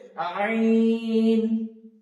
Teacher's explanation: আইনটা বের করার সময় আমাদেরকে একদম কণ্ঠনালীর শেষ যেখানে, কণ্ঠনালীর শেষ থেকে একদম ভিতর থেকে বের করে নিয়ে আসতে হবে আইন, যেন এটা মুখ থেকে না হয়।